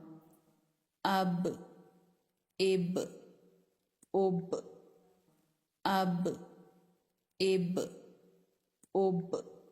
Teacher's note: با حروف قلقلہ میں سے ہے۔ جب یہ ساکن ہوگا تو اس پر تھوڑا سا جھٹکا ہوگا۔